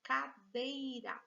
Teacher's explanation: veja que a sílaba forte ela tá aqui no meio e ela não é a última sílaba ele é a penúltima portanto ela é uma palavra paroxítona e essas duas últimas palavras